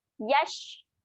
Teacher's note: Shin ketika mati, sifat dia kena keluar. Keluarkan angin.